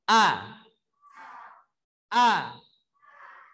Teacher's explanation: Kalau ada udaranya, bunyinya seperti ini. Jadi kalau huruf hamzah itu tidak ada udaranya.